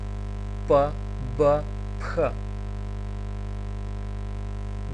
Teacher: се нарекуваат лабијали, бидејќи се прават на усна